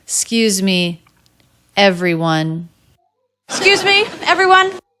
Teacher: it's not uncommon to drop the first vowel and drop the K and just say skews. S sound, K, U diphthong, Z.